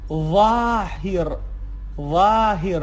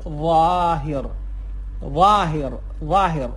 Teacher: ظ، ظ قوی تر از اون چیزی است که ما توی فارسی میگیم و یا قوی تر از در واقع حرف زاد هست که حالا در ادامه داریم.